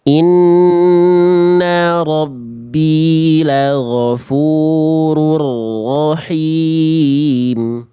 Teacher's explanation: ro itu ketika fathah atau domah dia harus tebal Bunda. Angkat pangkal lidahnya.